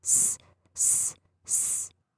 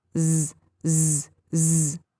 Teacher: Exact same position. Z is voiced, S is unvoiced.